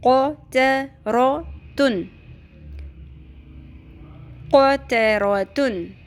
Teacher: قوف اور رو کو پر کرنا ہے لیکن تا کو ہرگز نہیں کرنا